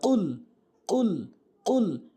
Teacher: কফ কুল গলার মাঝখান থেকে উচ্চারণ হবে